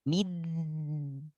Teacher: Setelah mi, ada bunyi samar sebelum masuk di.